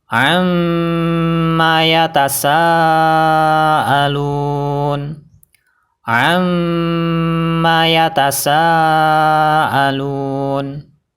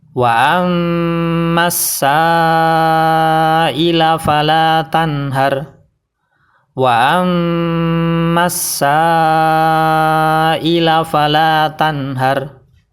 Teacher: Perlu diingat, ketika kita membaca mim yang bertasdid, mulut kita harus dalam keadaan tertutup. Kita tekan mim tasdidnya dan kita tahan 2 harokat. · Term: mim bertasdid